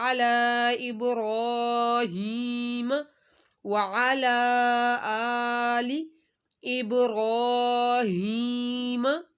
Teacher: با کا کلکلا، را کو موٹا اور کھڑا مادہ لمبا، یا ساکن سے پہلے زیر ہے تو یا مدہ.